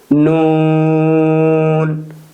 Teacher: জিহ্বার আগা উপরের তালুর সঙ্গে লাগিয়ে উচ্চারিত হয়